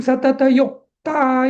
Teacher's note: आता युक्ता मधला तो क आहे तो जोडाक्षर असल्यामुळे तो यु बरोबर गेला त्यामुळे युक्त हा परत गुरु झालाय